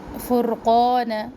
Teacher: را کو پر پڑھنا ہے اور را ہلے بھی نہیں